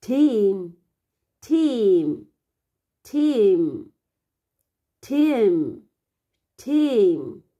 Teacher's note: cái độ dài của âm y dài cần ngân dài hơn nữa, tức là duy trì âm lực đều nhau và kéo dài hơn so với âm y ngắn